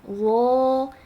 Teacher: tapi kalau nado dho itu pangkal lidah naik. · Pangkal lidah naik itu terdengarnya seperti kayak tercekat gitu ee apa terdengarnya.